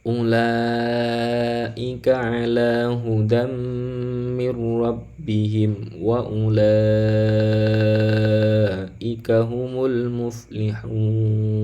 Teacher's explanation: Ulaika ini wajib ya, wajib dibaca panjang. Panjangnya berapa? Panjangnya adalah 4 atau 5 harokat ya. Boleh 4, boleh 5 harokat. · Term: mad wajib muttasil